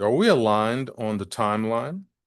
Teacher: Notice how I let my voice fall a little bit at the end.